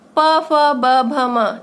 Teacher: इसमें हमारे होंठ ओष्ठ है, ये मिल रहे हैं, इसलिए इनका उच्चारण स्थान ओष्ठ है